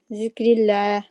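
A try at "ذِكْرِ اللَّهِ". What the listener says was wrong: ہاں پھر رلا نہیں نا کہنا رلا.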